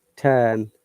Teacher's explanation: in british english turn r is silent